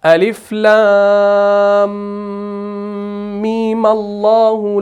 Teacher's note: اس کے بعد آخر والا جو میم ہے اس میں ادغام نہیں کرنا، اس کو مشدد نہیں بنانا، اس کو سمپل زبر دے کر پھر آگے ملانا ہے اللہ کے ساتھ